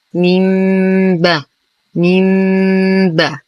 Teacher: لدينا أيضا نون ساكنة وبعدها حرف الباء الحكم إقلاب وهو الحرف الوحيد من حروف الإقلاب. تقلب النون الساكنة ميما عند الباء بدون ضغط على الشفتين فنقول ميم با ميم با.